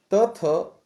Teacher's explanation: त थ जो है दंत व्यंजन है